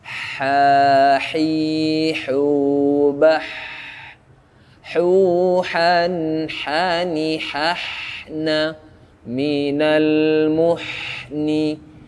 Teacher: Kemudian ha, huruf ha, ya. Kasih nafas, tenggorokan tengah, kasih nafas.